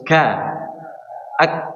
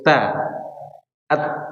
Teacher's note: Jadi huruf kaf ini sama huruf ta, dia suaranya tertahan atau masuk kategori sifat syiddah, tertahannya aliran suara.